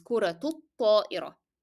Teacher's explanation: And because I'm connecting kura to ta'ira, so the ta in kura is connected to the following word, that's why you are going to pronounce ta marbuta with the sound of t, and at the same time you need to vocalize the short vowel dhamma.